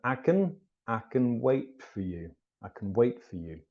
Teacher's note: the T before a hard consonant tends to disappear